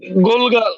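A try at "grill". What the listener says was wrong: না গোল না এটা গোরগল গোরগল গোরগল গোরগল এই উচ্চারণগুলো খেয়াল করবেন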